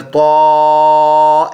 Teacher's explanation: ایک الف کی مقدار 1 سیکنڈ کے حساب سے لمبا کریں گے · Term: کھڑی زبر